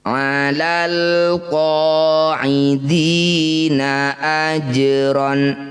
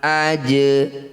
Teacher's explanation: qalqalah sugro tetap dipantulkan, bukan dihidupkan